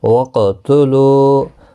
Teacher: قاف مستعلیہ ہے، پر پڑھا جائے گا، اس پر قلقلہ بھی ہوگا، قاف ساکن پر قلقلہ بھی ہوگا۔